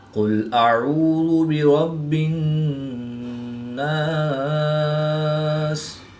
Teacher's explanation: قاف حروف مستعلیہ میں سے ہے تو اس کو پورے موٹا پڑھیں گے۔